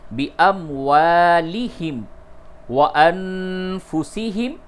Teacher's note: نون ساکن کے بعد فا ہے، اس جگہ پہ اخفا کیجیے